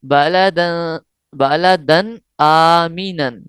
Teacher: یہاں غنہ نہیں کریں گے کیونکہ اخفا کا قاعدہ نہیں بلکہ اظہار کا قاعدہ لگ رہا ہے. حروف حلقیہ میں سے ایک حرف حمزہ آیا ہے.